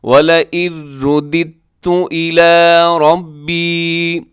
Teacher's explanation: دال کو تا کے ساتھ ملائیں گے، یعنی دال کے نیچے جو زیر ہے تو اس دال کو آگے تا کے ساتھ ملائیں گے۔ اس کو ہم ایسے نہیں پڑھیں گے وَلَئِن رُّدِدتُّ، ایسے نہیں ہے، بلکہ دال کو تا کے ساتھ ملائیں گے، اور درمیان میں جو دال آتی ہے اس دال کو ہم کھا جائیں گے، مطلب نہیں پڑھیں گے اس کو۔